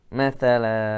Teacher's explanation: tanwin fathah diwaqafkan maka menjadi mad iwad 2 harakat